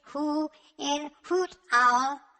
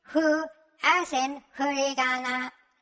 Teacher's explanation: when the lips are compressed, the air is slightly obstructed. This creates the sound hu, which is not the same as the English hu in hoot owl or the English fu in food.